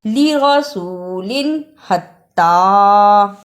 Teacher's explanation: لرسول، حتی، تنوین یعنی 2 زبر 2 زیر 2 پیش کے بعد حروف حمزہ ہا، عین ہا، غین خا میں سے کوئی حرف ہو تو اظہار ہوگا یعنی غنہ نہیں ہوگا